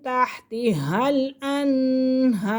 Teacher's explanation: تحتی پہلا ہا حلوے والا پھر موٹا ہا سینے سے ادا ہوگا